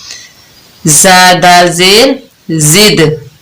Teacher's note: دال ساکن ہے اور یہاں پر ہم قلقلہ کر رہے ہیں، اس کی آواز پلٹ کر واپس آ رہی ہے، یعنی یہ اس میں ڈبل ساؤنڈ ہے۔